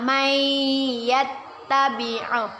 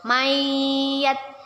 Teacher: Dan kita masukkan huruf nun sukunnya kepada huruf ya dengan berdengung dan ditahan 2 harokat. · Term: idgham bi gunnah